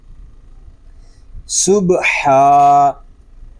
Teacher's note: ہا حلق کے درمیان والے حصے سے ادا ہوگا